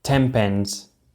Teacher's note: In 10 pence, the p sound in pence, which is pronounced by getting our lips together, influences the way we say the sound of 10, and this becomes an also pronounced by getting our lips together.